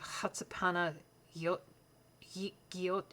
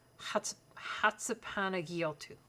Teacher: the CH doesn't make a ch sound, it's more a h sound. So it's kind of Hatsapana Giot, and it's a soft G, not J, no.